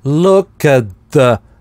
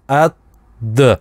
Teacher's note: здесь the звучит звонкое, но /t/ в at не замещается на д